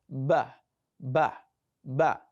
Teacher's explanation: the letter ba is produced by the combination, the coming together of the upper and the lower lips. So you cannot pronounce ba without you merging both upper and lower lips.